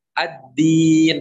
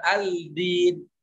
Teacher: Nah, jadi langsung masuk. Huruf lamnya hilang sudah. Sudah diidghamkan kepada huruf dal. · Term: idgham syamsi